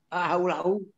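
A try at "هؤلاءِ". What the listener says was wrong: Kok haula lagi? Haulai mabni dengan kasrah.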